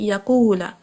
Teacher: جیسے آپ دیکھیں یقولا، واو کے اوپر کچھ بھی نہیں، خالی ہے، قاف کے اوپر پیش آئی ہے تو ہم نے قو کر کے اس کو لمبا کرنا ہے. یہ مد واو، یہ اس کی شرط ہے کہ یہ خالی ہو، اس سے پہلے حرکت ہو ضمہ کی.